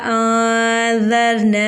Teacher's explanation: اب دیکھیں نون جو ہے وہ مشدد ہے، الف سے پہلے نون پر زبر ہے، الف مدہ ہو رہا ہے، حمزہ دوسرے کلمے میں ہے تو یہاں پر مد منفصل ہوگا، لیکن ہم اس کو بھی 2 یا 3 الف کے برابر کھینچ کے پڑھیں گے۔ روا ساکن سے پہلے زال کے اوپر زبر ہے، روا کو پوری یعنی موٹا پڑھیں گے۔